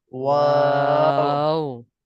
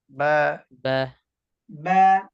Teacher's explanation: ওয়াও উচ্চারণের সময় ঠোঁট গোল হবে, বা উচ্চারণের সময় ঠোঁটের ভিজা জায়গা থেকে উচ্চারণ হবে